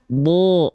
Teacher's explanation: Tapi kalau kita bedah nih mulut kita, yang membuat vokal O itu terhasilkan karena pangkal lidah kita naik